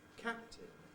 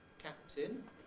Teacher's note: we've got two separate plosives the first one is bilabial the second one is alveolar and typically the approach for the second one takes place during